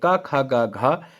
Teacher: क ख ग घ ये आपके कंठ से बोले जाते हैं